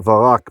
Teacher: She would summon Barak or Varak because the vocal schwa makes the B become a V